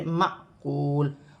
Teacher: الف پر جزم کی حرکت ہے تو الف حمزہ بھی پڑھا جائے گا اور جھٹکے کے ساتھ پڑھا جائے گا